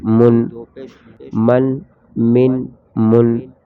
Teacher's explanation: یہ بغیر غنے کے ہم نے پڑھا ہے، مطلب غنہ نہیں کیا ہے۔